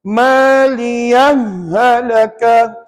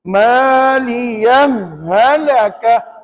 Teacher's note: ha pertama masuk dalam ha kedua. Dan dibaca tanpa sakta. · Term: idgham tanpa sakta